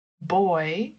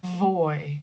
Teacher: So the difference between B and V is in part because the B sound is like boy with the two lips touching boy. And the V sound is the teeth and the lower lip.